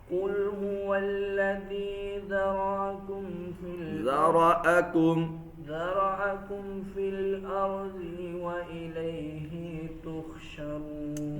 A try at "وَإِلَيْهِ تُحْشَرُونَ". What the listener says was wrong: लंबा नहीं करना हरफों को.